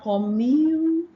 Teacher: So you have the yes sound, hidden yes sound after the M sound